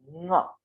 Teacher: ये जो ङ है, इसका उच्चारण कंठ और नासिका दोनों के प्रयोग से होगा। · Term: अनुस्वार